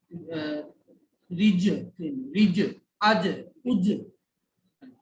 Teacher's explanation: জিমটা হলো জিহ্বার মাঝখান থেকে উচ্চারণ হয় এবং কোনো বাতাস বের হয় না